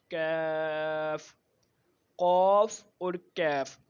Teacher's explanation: کیف جو ہے یہ قاف کی جگہ سے تھوڑا سا منہ کی طرف ہونٹوں کی طرف جب ہم آتے ہیں تو اس سے جب زبان سخت تالو سے جو ہونٹوں کی طرف والا تالو ہے وہاں لگتی ہے تو وہاں سے کیف ادا ہوتا ہے